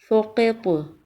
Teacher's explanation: سین میں سیٹی کی آواز آئے گی اور طا پر قلقلہ ہوگا